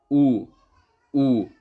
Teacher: छोटा ऊ और बड़ा ऊ दोनों का उच्चारण स्थान क्या हो जाएगा आपका, ओष्ठ हो जाएगा